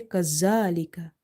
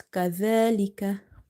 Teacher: in order to pronounce it correctly, you have to touch the tip of your tongue with the inner edges of your top two front teeth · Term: letter zal